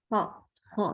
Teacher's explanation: Gitu. Jadi sempit sekali celahnya, sehingga dia itulah menyebabkan suaranya menjadi tebal.